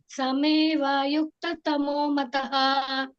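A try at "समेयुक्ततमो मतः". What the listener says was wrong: ಸಮೇವ ಇಲ್ಲವಾ ಎಲ್ಲಿದೆ ಸಮೇಯುಕ್ತಮೋಮತ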